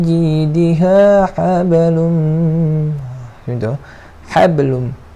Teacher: Kalau jumpa huruf ba ni, kalau ada bertanda mati ataupun kita wakafkan dia, maka kena ada lantunan. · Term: huruf qalqalah